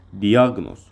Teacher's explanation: Diaqnoz, vurğu ikinci hecədir.